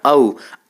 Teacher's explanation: औ को बोलने में कंठ और ओष्ठ का प्रयोग किया जाता है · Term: कंठोष्ठ्य ध्वनि